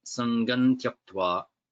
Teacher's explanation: this nasal ma becomes na, sangan tyaktva.